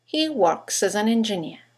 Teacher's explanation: You've got 3 words that begin with a vowel, as, an, and engineer. In connected speech, they all run into each other. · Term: phonetic links